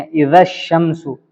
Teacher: الف لام کو کھا گئے، سیدھا شین پہ چلے گئے